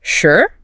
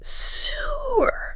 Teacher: There is a world of difference between a quick, sharp, sure, meaning I agree, and a long, drawn-out, sewer.